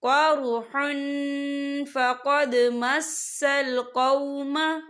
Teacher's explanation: تنوین کی آواز کو ناک میں چھپائیں گے۔